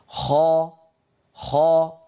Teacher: الصوت مضغوط إلى قبة الحنك ولكن الفم ليس فيه انغلاق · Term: مستعلية